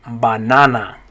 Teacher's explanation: in spanish they're all gonna make an ah sound every single one